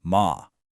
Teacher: the fourth tone is a sharp falling sound like you're giving a command.